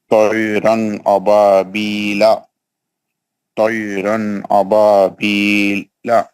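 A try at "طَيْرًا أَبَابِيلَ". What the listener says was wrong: لا نہیں پڑھنا ہے، چھوڑنا ہے نا، بیل بس.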